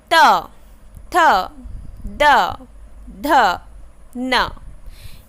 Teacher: त वर्ग के जो वर्ण है वो ऊपर वाले हिस्से में, ऊपर वाले जो दांत है यानी कि जो टीथ है उसको छू कर निकलती है उसकी आवाज़